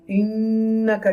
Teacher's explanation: To take sound into your nose and hold noon sound for a moment. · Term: nasalization gunna